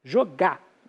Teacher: o português vai variando e nós vamos apagando esse R final